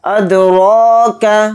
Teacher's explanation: را کے اوپر کھڑا زبر ہے، را کو یہاں پر تھوڑا کھینچ کر پڑھیں گے اور را کو یہاں پر موٹا بھی پڑھیں گے